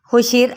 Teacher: اس کو جب ساکن کریں گے تو یہی را باریک پڑا جائے گا